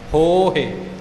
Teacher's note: ਜੇ ਹੋਹੇ ਕਹਾਂਗੇ ਤਾਂ ਉਹ ਹਾਹੇ ਨੂੰ ਲਾਮ ਬਣ ਜਾਂਦੀ ਹੈ। ਇਉਂ ਹੋ ਜਿਹੜਾ ਹੋੜਾ ਹੈ ਇਹਨੂੰ ਥੋੜਾ ਲੰਮਾ ਕਰਨਾ ਹੈ ਤੇ ਹਾਹੇ ਦੀ ਸਿਹਾਰੀ ਨੂੰ ਛੋਟਾ ਰੱਖਣਾ ਹੈ। ਹੋਹੇ। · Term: ਦੀਰਘ ਮਾਤਰਾ